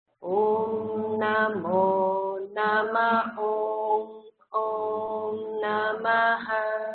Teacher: We've got a mo going down, a ma up, and then a final up swara.